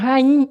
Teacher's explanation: o som desse hiato, ele vem nasal. É um som nasal.